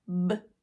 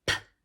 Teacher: We form them the exact same way, but one is voiced and one is unvoiced. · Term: voiced and unvoiced pairs